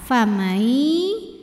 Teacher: dengungkan sampai ada suara masuk yang masuk ke hidung · namanya idgham bhunah karena ada nun sukun yang menghadapi huruf ya nun sukun dibacanya masuk ke ya · Di sini ada hukum tajwid namanya idgham bi gunnah karena ada nun sukun yang menghadapi huruf ya. Nun sukun dibacanya masuk ke ya, famai, dan tahan dengungkan. Famai sampai ada suara masuk ke hidung ya. Atau ini disebut dengan idghamnya idgham bil gunnah yang nakis karena tidak sempurna masuk huruf nun ke ya-nya.